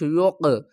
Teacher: قاف کے اوپر قلقلہ کریں گے اور قاف کو پر بھی پڑھیں گے